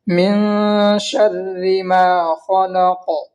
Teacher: اور شر میں را کو باریک کریں گے اس لیے کہ را مشدد کے نیچے زیر ہے، اور میم کو کھینچیں گے اس لیے کہ الف مدہ ہے، الف سے پہلے میم کے اوپر زبر ہے اس لیے الف مدہ ہوگا، الف مدہ کو ایک الف کے برابر کھینچ کر پڑھیں گے۔ خا کو موٹی آواز سے پڑھیں گے اس لیے کہ حروف مستعلیہ میں سے